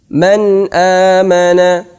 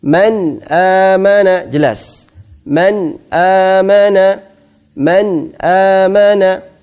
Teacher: Jelas artinya tanpa ada dengungan sama sekali. Tidak dimasukkan kemana-mana dan juga keluar dari makhrajnya nun dengan jelas. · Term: izhar